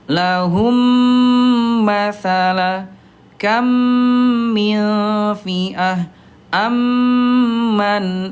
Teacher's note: Dibaca jelas mimnya dan ditahan dua ketukan lambat. Ayah Bunda ditahan nih ya, gitu ya, dirapatkan bibirnya dan ditahan.